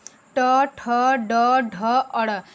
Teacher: अब मूर्धा, ट, ठ, ड, ढ, अड़, यानी जो मेरी जिह्वा है वो मूर्धा पे लग रही है